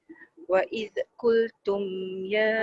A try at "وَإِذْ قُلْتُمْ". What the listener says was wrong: Jangan bunyi Z. Jangan bunyi Z. Wa iz. Dia kena hati-hati masa menyebut Z tu.